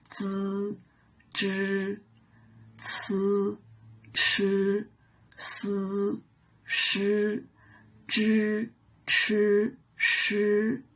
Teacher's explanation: curl up our tongues slightly backward to pronounce zhi, chi, shi